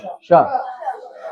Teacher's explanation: જીભ તાળવાને અડાળીને શ બોલવાનો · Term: તાલવ્ય શ